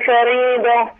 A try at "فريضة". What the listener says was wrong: يبقى كده فخمنا الراء، هي الراء مرققه لانها محركه بالكاس. فري، عارفه فريد؟ انا بقول فريد لكن بقولش فريد.